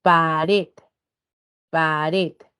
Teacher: El primer grupo de palabras, de acuerdo a la ubicación de la sílaba tónica, es llamarlas agudas, pero también se le conoce como oxítonas. Estas palabras agudas presentan la mayor fuerza de voz en la última sílaba.